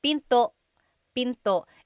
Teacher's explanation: don't forget the glottal stop. Don't forget to stop the sound at the end. That's called a glottal stop.